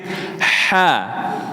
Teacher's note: Kalau ha itu tenggorokan tengah, atas sedikit. Ha. Suaranya bersih, mengalir persis di atas lidah.